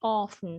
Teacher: keep in mind that the T is not pronounced. The T is silent